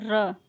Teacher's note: जब बोलते हैं तो प्रकंपन होता है ना, कंपन टाइप का निकलता है, र, जीभ पता चल जाती है कि हाँ। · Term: लुंठित